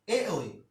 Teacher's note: এটা কণ্ঠ এবং তালু মিলে উচ্চারিত হয়, তাই এটার নাম হচ্ছে কণ্ঠ তালব্য